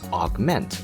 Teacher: the stress is on ment, and this is a common characteristic for verbs with 2 syllables